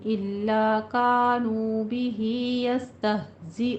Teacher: बिही में मदे सिला सुगरा, 2 काउंट करना है